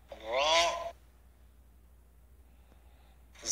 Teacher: র হরফটি জিহ্বার আগার পিঠ উপরের তালুতে লাগবে মোটা হবে বাংলা আকার প্রকাশ পাবে না